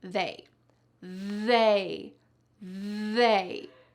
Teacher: The first thing I want you to notice is that my tongue is between my teeth. They. And the second thing is that there's a lot of vibration in my throat. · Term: voiced TH